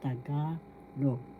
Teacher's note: First syllable ta, second syllable ga, third syllable log. The accent is in the second syllable, so you pronounce this or bigkas Tagalog.